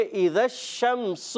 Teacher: تو میم میں غنہ نہیں کرنا، اور سین کو سیٹی کے ساتھ باریک رکھنا ہے. شین میں تفشی، منہ میں آواز پھیلتی ہے. سین میں سیٹی ہوتی ہے، تو پڑھیں گے اذا الشمس.